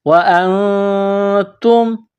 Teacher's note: نون ساکن کے بعد تا ہے، حروف اخفا ہے، تو یہاں نون ساکن میں آواز ناک میں چھپائیں گے، اخفا کریں گے ، وَأَنْتُمْ، تا کو میم کے ساتھ ملانا ہے، وَأَنْتُمْ تَعْلَمُونَ،